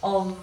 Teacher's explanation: when we make the F sound there, it's actually sounding a little bit like a V